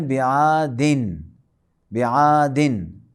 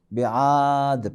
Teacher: الم تر کیف فعل ربک بعاد، اصل میں ہے بعادن، بعادن، اور وقف کرتے وقت بعاد پڑھیں گے